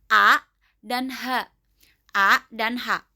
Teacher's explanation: panggal tenggorokan, aqsal halq. Keluar huruf dari sini adalah hamzah dan ha besar.